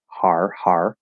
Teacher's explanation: It's an R-colored fifth vowel, R, har, har.